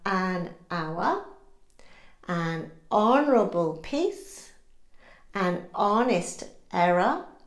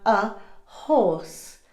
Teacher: Because the h does not have any audible sound, the sound that follows the article is a vowel, so we use an. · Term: unsounded h